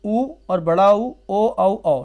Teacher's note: जिन स्वरों के उच्चारण में ओंठ गोलाकार होते हैं, वह वृत्तमुखी स्वर कहलाते हैं